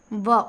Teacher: ऊपर वाला दांत नीचे वाले ओठ में हल्का सा टच करता है। तो दांत और ओठ के मिलने से जिस व्यंजन का उच्चारित होता है वह दंतुष्ठ होता है। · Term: दंतोष्ठ व्यंजन